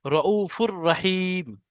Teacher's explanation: তানমিনের পরে র এসছে, তাহলে এই তানমিনটা রোয়ার ভিতরে ঢুকে যাবে, গিয়ে একালি পরিমাণ গুণনা বিনা গুণনা হবে, রউফুর রহিম। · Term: ঈদগামে তাম